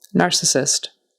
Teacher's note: Syllable stress on the first syllable.